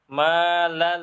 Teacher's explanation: Langsung nempel ke huruf lamnya atau huruf ro-nya dengan agak ditinggikan, lalu setelah itu dibaca.